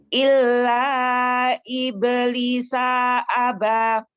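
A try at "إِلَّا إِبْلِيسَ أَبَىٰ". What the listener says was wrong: Salnya kepanjangan sedikit. Contohkan ya. Illa iblisa aba.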